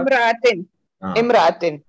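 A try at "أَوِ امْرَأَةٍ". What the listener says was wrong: और फिर इसको औ इमरातिन नहीं पढ़ना, बल्कि इसको मिला के पढ़ना है। औ की वाव साकिन है और इमरातिन का मीम साकिन है, तो कैसे पढ़ेंगे? अविम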